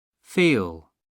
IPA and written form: fiːl (feel)